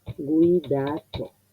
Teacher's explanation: Esa U es una semiconsonante.